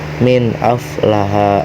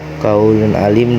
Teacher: Dalam izhar halki, huruf nun sakinah atau tanwin dibaca dengan jelas dan tidak diidghamkan atau diikhfakan. Contoh, min aflaha dibaca min aflaha dengan jelas.